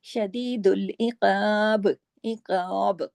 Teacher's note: بڑا غنہ ہوا، شدید العقاب، عقاب، قاف موٹا، قاف، اور جب عقاب پہ ہم با پڑھیں گے نا تو با کے نیچے کی زیر تو ہم نے نہیں پڑھی اس لیے با پہ بھی کلکلا ہوگا